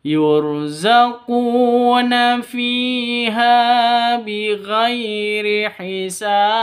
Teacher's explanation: Hisab mad alif li sukun, panjang boleh 2, boleh 4, boleh 6 ketukan.